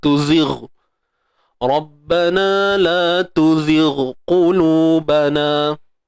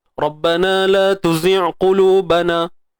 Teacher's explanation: Okey, huruf ghain ni dia tebal. Jadi bila tebal, bila kita matikan dia pun tebal juga.